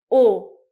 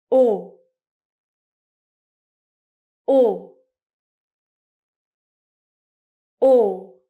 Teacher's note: my mouth is round as well, but it doesn't move, and the sound is a tiny bit longer. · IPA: /ɔ:/